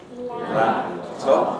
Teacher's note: Typical place for glottalization, syllable final fortis stops before the following consonant. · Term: pre-glottalization